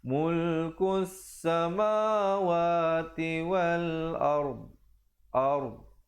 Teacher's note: Bawakan lidahnya ke tepi. Makhraj huruf yang terakhir adalah dhad.